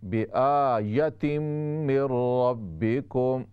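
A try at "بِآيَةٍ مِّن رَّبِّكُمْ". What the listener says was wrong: या का जबर लंबा न करें।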